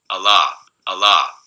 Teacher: dip in intensity between the the first and the second vowel la is a very sonorous very vowel like consonant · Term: liquid